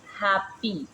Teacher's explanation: For example हैप्पी, तो हैप्पी में ए की जो साउंड आ रही है एच वैसे ही आएगा। आप देखिए एच के ऊपर स्ट्रेस है and that is called primary stress. फिर हैप्पी, ए की जो साउंड आ रही है उसको देखें ए ई के सिंबल से रिप्रेजेंट किया हुआ है, पी वैसे ही जा रहा है, और ई जो आई की साउंड है वो ऐसे आ रही है, ठीक है।